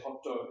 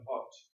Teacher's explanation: I mean, it's like in Japanese, after a hard sound, like a t or a d, they put an extra vowel, so they say hotto instead of hot.